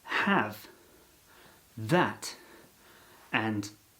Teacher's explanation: The IPA uses the ash symbol for the A vowel sound, which is the near open front unrounded vowel. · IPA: /æ/